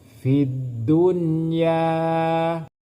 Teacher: Tidak boleh masuk dengan berdengung. Kalau masuk dengan berdengung itu punya idgham bi gunnah. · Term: izhar mutlaq